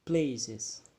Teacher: the strong syllables is located in the play, and the weak syllables is located in the cis.